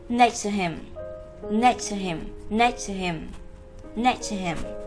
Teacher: từ him chúng ta sẽ đọc rất nhẹ thành him, him, gần như là bỏ chữ h đi các em ạ. Có thể bỏ hoặc có thể giữ, nhưng từ đấy chúng ta sẽ đọc cực kỳ nhẹ him, và sẽ đọc các cụm thành next to him, next to him, next to him, next to him.